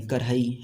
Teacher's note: सामान्य वर्तमान काल में मूल क्रिया और सहायक क्रिया के मध्य अर्धमात्रिक ध्वनि सुनाई पड़ती है, जिसे लेखन में दिखाने के लिए मूल क्रिया और सहायक क्रिया के मध्य हाइफन का प्रयोग करते हैं।